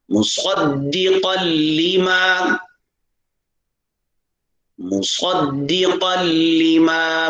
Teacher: دال پر بھی شد ہے، لام پر بھی شد ہے، ٹھہراؤ کے ساتھ ادا کیا جائے ، اور صاد کو پر ادا کرنا ہے، مصدقا لما، مصدقا